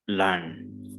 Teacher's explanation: Learn again, R is before N. So we will not pronounce R.